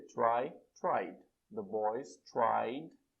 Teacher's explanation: Se terminou com som de vogal, vibra. É só acrescentar o som do D.